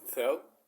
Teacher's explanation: in Spain it is th like the th sound in English